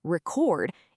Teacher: But if you shift the stress to the second part, record, it becomes a verb, like to record a video. It's the same exact spelling but a totally different word.